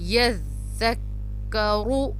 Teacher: रो पेश रू, रो को मोटा अदा किया जाएगा